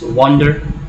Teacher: In the next line you have wonder, which is also a multisyllabic word. There are two syllables and you stress the first one